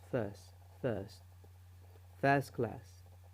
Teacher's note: Here the T in the word first is missed out.